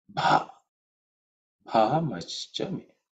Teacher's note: Bha is the fourth letter in the pavarga, so it has to be aspirated.